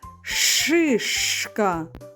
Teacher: звук ш - твердий, приголосний, глухий звук